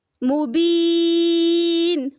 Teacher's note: اور نمبر 3، جن حروف کے، جن کلمات کے آخری حرف سے پہلے حرف مدہ ہو، آخری حرف سے پہلے حرف مدہ ہو، تو وقف کی صورت میں آخری حرف کو ہم کیا کریں گے؟ ساکن کریں گے، اور حروف مدہ کو 4 سے 5 الف برابر کھینچ کے پڑھیں گے